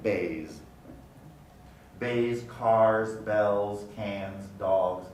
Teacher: at the end of car and bay which is a vowel all of those are going to have a z pronunciation a voiced alveolar fricative